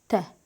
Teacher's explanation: dilin ucu yuxarı kəsici dişlərin kökünə toxundurulur. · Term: incə tədir